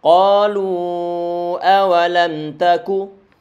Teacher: A ini dia tipis, a enggak boleh o.